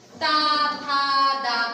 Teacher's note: उच्चारण कहां से हो रहा है, बताएं, दंत से, दंत से हो रहा है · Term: ता वर्ग